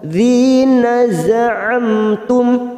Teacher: mim sukun masing-masing kita baca jelas tanpa mendengung, namanya bacaan idhar safawi